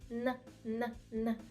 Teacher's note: потрібно коренем або середньою частиною язика доторкнутися до піднебіння якщо зазвичай українською ми використовуємо кінчик язика і торкаємося кінчиком до зубів н н н тут ми маємо коренем язика доторкнутися до піднепіння